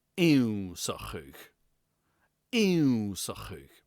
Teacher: Note how crisp the beginning is. There's no y sound.